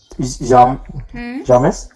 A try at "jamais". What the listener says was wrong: jamais. S will not be pronounced last which है